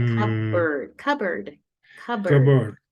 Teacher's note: you don't pronounce the P